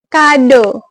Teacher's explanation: dia posisi lidahnya itu madya atas. Madya atas menggunakan lidah bagian belakang